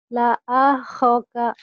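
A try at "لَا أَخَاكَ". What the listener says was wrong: Nggak ada yang panjang. Bukan gini bacanya. La akhoka.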